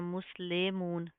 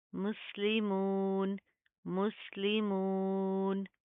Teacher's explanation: मुस्लिमून, मीम सीन पेश मुस, मुस्लाम ज़ेर ली होता है, इसको आपने ले नहीं करना, मुस्लिमून, नो, मजहूल नहीं करेंगे, मारूफ पढ़ेंगे